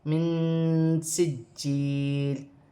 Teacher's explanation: من سجیل، جی مشدد ہے، جماؤں کے ساتھ ادا کیا جائے گا۔ یا ساکن سے پہلے زیر ہے، یا مدہ بنے گی، 1 الف کی مقدار کھینچ کے پڑھا جائے گا۔ 2 زیر کی تنوین وقف کی صورت میں گر جائے گی اور لام ساکن ہو جائے گی۔ · اور نون ساکن میں اخفا ہوگا، نون ساکن کے بعد حرف اخفا میں سے سین آ رہی ہے۔ من سجیل، جی مشدد ہے، جماؤں کے ساتھ ادا کیا جائے گا۔